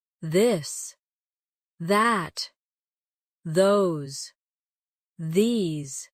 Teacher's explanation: the softer version of th where you let your tongue touch your teeth lightly but use your voice